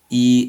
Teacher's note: E is a voiced close front unrounded vowel.